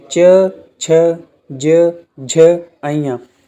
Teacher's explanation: अब आपका पूरा का पूरा च वर्ग है जो हमारा तालु से बोला जाता है